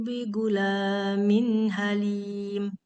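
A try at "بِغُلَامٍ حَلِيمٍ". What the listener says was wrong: Bighu gain jangan bigu.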